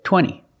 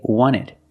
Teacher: wanted or wanted it's more common to hear Americans say wanted you have NT in the middle the t is silent